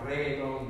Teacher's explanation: He trills his R really hard on reggaeton.